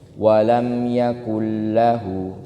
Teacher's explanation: huruf lam ini nanti punya sifat namanya bainiyah atau tawassut. Dia ini di antara ditahan sama tidak ditahan. Makanya dia ada tempo yang agak panjang sedikit.